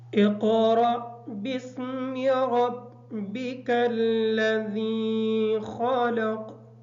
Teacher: اقرأ کا جو قاف ہے اس کو پر موٹا پڑھیں گے، اور را جو ہے اس کو پر پڑھیں گے، اور را کے بعد حمزہ ہے، اس کو را کو تھوڑا سا جھٹکا دے کے پڑھیں گے تاکہ یہ حمزہ صحیح طریقے سے ادا ہو جائے. · خلق کا جو خا ہے اس کو موٹا پڑھیں گے، اور قاف حالات وقف کی وجہ سے ساکن بھی ہوگا اور اس کو موٹا بھی پڑھیں گے